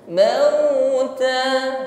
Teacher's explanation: sini harfulin ya ada huruf Lin sempurnakan pengucapannya dengan bid syafatain himpun bibir ke depan mauta sehingga bunyinya benar-benar u tidak miring pada u maut ya ketika bibir tidak dihimpun sempurna maka bunyinya